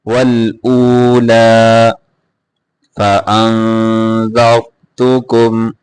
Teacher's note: را کو موٹا کر کے پڑھیں گے، زا نہیں پڑھنا